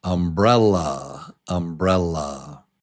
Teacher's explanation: Number 2 is the strong syllable. Brell. Umbrella.